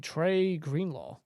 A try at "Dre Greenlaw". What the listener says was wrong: Yeah, you said Trey. I was like, hold on.